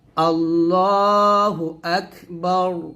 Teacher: আমরা অনেকে থেমে বলি, যদি থেমে বলি তাহলে এর রটা সাকিন হয়ে যাবে, তাহলে বলতে হবে আল্লাহু আকবার, বা রজবর বার, এরকম র সাকিনটা মোটা করতে হবে, মানে রটাকে মোটা করে পড়তে হবে।